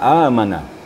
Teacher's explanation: ya mad badal jadi a e u itu mad badal ya kapasitas panjangnya satu Alif atau dua harakat